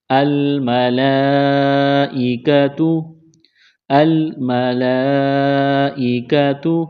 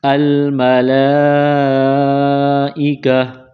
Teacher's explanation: جب قرآن پاک میں اس لفظ پر رکیں گے، سٹاپ کریں گے، وقف کریں گے، تو گول تا کو ہا سے تبدیل کریں گے